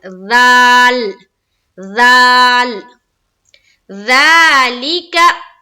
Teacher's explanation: इतना निकालना है कि अगर हमारे सामने कोई बैठा हुआ है तो उसे हमारी जबान की नोक नजर आए, इतना हमें निकालना है। और निकालते हुए ऊपर की दांतों से सटाकर ज़ाल अदा करना है